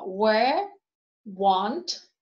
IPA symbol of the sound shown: wɜː